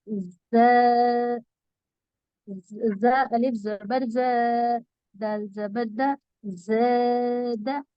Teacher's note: ز کو تو ہم نے کھینچا الف مدہ کی وجہ سے، اور دا کو جلدی پڑھا زبر کی وجہ سے۔ آپ کہہ سکتی ہیں زا پر الف مدہ ہے اس لیے کھینچ کر پڑھیں، دا کو جلدی پڑھیں زبر ہونے کی وجہ سے۔